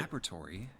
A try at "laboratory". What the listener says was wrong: Laboratory, not laboratory. Pronounce the O, you fucking